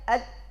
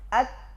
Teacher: Dal bersifat jahr, tertahan nafas, sedangkan ta bersifat hams, mengalir nafas.